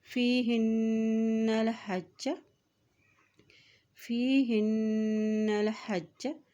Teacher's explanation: हाज की ज़ेर को नून के साथ मिलाते हुए पढ़ेंगे, नून के ऊपर शद है, और जब नून के ऊपर शद आ जाती है तो वहाँ पर भी गुना अदा किया जाता है